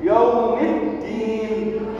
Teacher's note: Ad-din harus tekan huruf dal dan ada tasydid.